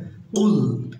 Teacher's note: জিহ্বার গোড়া তার বরাবর উপরে তার সঙ্গে লাগিয়ে কফ বলতে হবে